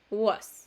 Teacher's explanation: Esta O, esta A es lo mismo, es un schwa. Entonces, no es una A, tampoco es una O, es entre la A y la O. Es como un was, ¿cierto?